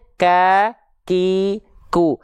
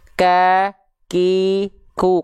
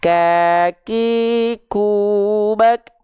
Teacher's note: Kalau kita ngeh, kita pasang pendengaran kita, kita simak baik-baik, itu ada percikan nafasnya dulu di sana